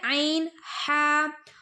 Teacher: عین ہا حلق کے درمیانی حصے سے ادا ہوتے ہیں، حلق کا جو ہمارا بیچ کا حصہ ہے نا، بیچ والا، وہاں سے عین ہا ادا ہوتے ہیں، ٹھیک ہے۔